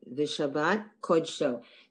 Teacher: only in the word, in variations of the word kodesh, it's pronounced aw. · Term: kamaz